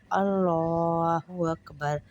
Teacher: اللہ کے لام کو موٹا کریں گے کیونکہ لام سے پہلے زبر ہے